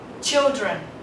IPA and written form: ˈtʃɪldrən (children)